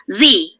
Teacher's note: Ujung lidah keluar antara gigi atas bawah. Zi nak nipis. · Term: zal nipis